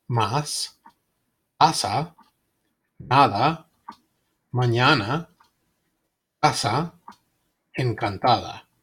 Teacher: A, like the A in father, but shorter.